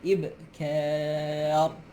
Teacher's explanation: Walaupun ra baris bawah, tapi kita kira hak sebelum dia baris atas. Bila sebelum dia baris atas, ra tu jadi ra tafkhim, ra tebal. · Ka nipih sampai dekat ra baru tebal. Ibkar. Walaupun ra baris bawah, tapi kita kira hak sebelum dia baris atas.